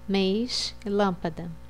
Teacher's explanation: Circunflexo, faz com que a vogal tenha som fechado